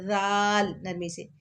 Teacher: زبان کی نوک اوپر والے دو دانتوں کے ساتھ ٹچ کر کے پڑھنا ہے